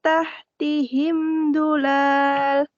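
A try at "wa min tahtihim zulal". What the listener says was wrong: Nah, lalnya pendek. Ulang.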